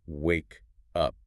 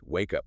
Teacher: >> Notice the transition between the words there. The K sound at the very end of wake flows directly into the U sound of up. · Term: It connects